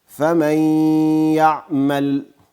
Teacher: عین لام دواړه ساکن دي آواز ټکان پیدا نه کی · ساکن نون په یا باندې بدل خو د غنې صفت باقی ده غنه به کوو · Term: ادغام